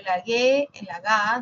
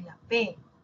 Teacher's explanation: Ambos son oclusivos. Ambos son oclusivos. Una es sonora, la otra es sorda.